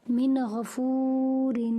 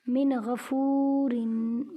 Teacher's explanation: نون ساکن کے بعد غین حروف ہلکی کا ہے، اسی لیے یہاں پر غنہ نہیں ہوگا، نون کو ظاہر کر کے پڑھیں گے